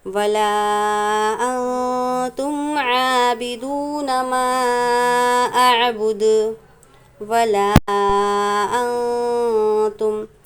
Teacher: حروف مدہ کے بعد حمزہ دوسرے کلمے میں ہے، 2 یا 3 الف کی مقدار مد کریں گے